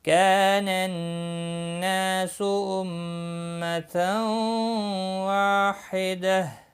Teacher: كانن کا الف مدہ ہے، ایک الف کے برابر کھینچ کر پڑھیں گے۔ نون مشدد پر غنہ ہوگا۔